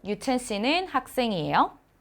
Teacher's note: So the sentence is same, but when your tone goes up, that's the question in Korean.